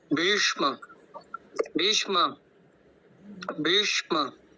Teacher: होंगे जो बकार है उसमें दीर्घ इकार है और उसके पश्चात जो श है वो मूर्धन्य सकार वाला है और म का उच्चारण भी पूरा करना है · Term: मूर्धन्य शकार